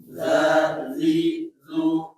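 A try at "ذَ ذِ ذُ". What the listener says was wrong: Ini biasa jangan zu saja, jangan ke dha ya, biasa aja dzidzu biasa. Nah, berarti kan pindah ke dha dia. Tapi saya ulangi dzidzu,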